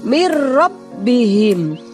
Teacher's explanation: huruf roh maka non nya tidak dibaca dengan jelas akan tetapi melebur kepada huruf ro dan tidak boleh berdengung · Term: Idgham bilagunnah